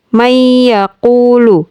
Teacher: Dibaca dengan senandung dua harakat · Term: Idgham Bighunnah